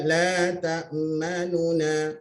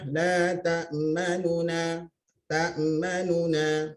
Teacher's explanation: Tapi nu itu disebut dengan tidak cukup, ya. Harokatnya tak cukup, ya. Sikit saja 1/3 lebih kurang. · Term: raum